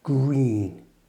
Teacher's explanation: make sure you use your lips pushed forward for green. Like this green. It's your lips that make the R sound, not your tongue.